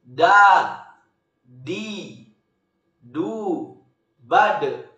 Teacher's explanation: huruf-huruf dak keluar dengan cara menyentuhkan ujung lidah ke gusi bagian atas